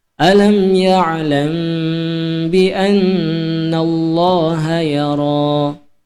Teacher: alam ya'lam, lam ditahan 2 harokat atau 2 kali ketukan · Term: ikhfa syafawi